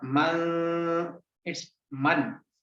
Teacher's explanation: Mim to fatha man, it's man, the sound of noon, and I am hiding that sound in nose. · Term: Ikhfa